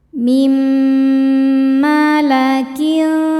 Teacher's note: Cara bacanya bunyi nun dimasukkan ke mim disertai dengungan. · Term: idgham bi gunnah